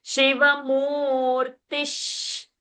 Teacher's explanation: Shiva mu, we are holding dirgha. Then Ti is short and Visarga.